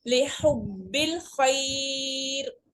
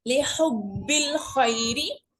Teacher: मदलीन आरिज हो रही है और 3 फिंगर स्ट्रेच होगा वक्फन की सूरत में, लेकिन जब कंप्लीट पढ़ेंगे तो हम इसको खींचेंगे नहीं